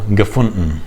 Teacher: if it's N-D-E-N, then the D almost sounds like a glottal stop